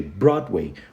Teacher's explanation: Então a gente fala Broadway. O som do D no final da sílaba, assim como o T, ele também pouco é pronunciado